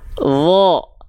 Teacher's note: Huruf wo ketika dia berharokat fathah kan dia dibacanya condong pada vokal O terdengarnya. Ya, contohnya wo. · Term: huruf yang tebal